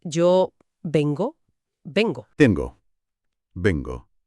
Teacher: Históricamente, la base de la lengua buscaba un sonido muy fuerte y estable que detuviera el aire justo antes de pronunciar la vocal O final. Al subir la parte posterior de la lengua contra el paladar, los hablantes generaban esa G para anclar la palabra con contundencia. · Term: anclaje velar